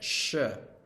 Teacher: post alveolar which just means behind the alveolar Ridge behind those bony bits